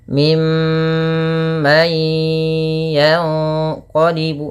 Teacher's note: suara mnya ditahan ya teman-teman jangan hanya lepas saja tapi tahan dulu dua harakat baru dilepas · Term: gunah